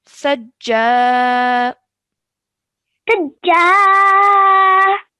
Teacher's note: It's an alif mud because it's alif, a blank alif, and the letter previous to it has a fatha. Okay, so we have to stretch the sound out of ja for 2 seconds